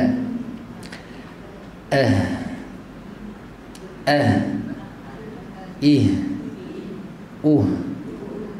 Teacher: Ha pangkal kerongkong ataupun pangkal tekak. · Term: huruf ha